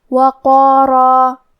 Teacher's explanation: کلمت وقارا حرف القاف کی ادائیگی زبان کے جڑ اور تالو کے نرم حصے سے ہے. قاف حروف تفخیم میں سے بھی ہے، تو ہم یہ حرف کو موٹی آواز میں پڑھیں گے، اور کیونکہ اس کے بعد مد الف ہے اور مد الف اپنے پیچھے والے حرف کا حکم لیتا ہے تفخیم میں یا ترقیق میں، تو ہمیں مد الف کو بھی بھاری آواز میں پڑھنا ہے.